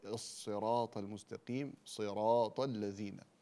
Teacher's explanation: الصاد هذا حرف تفخيم يعني لا يتأثر بالكسر، فنفخم الصاد